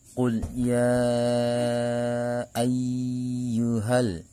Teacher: Mad tabi'inya adalah alif, sebelumnya fathah, kemudian bertemu dengan alif yang berharokat disebut dengan hamzah. Maka cara membunyikannya dibaca panjang 4 sampai dengan 5 harokat. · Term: mad jaiz munfasil